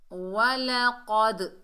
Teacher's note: दाल हुरूफ़ कलकला में से साकिन हालत में आ रहा है, तो यहाँ इसकी डबल साउंड आएगी। वलक़द, देखिए दाल की डबल साउंड आई और क़ाफ को हमने मोटा पढ़ा।